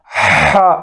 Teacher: ہا حلق سے، سینے سے نہیں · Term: بڑی ہا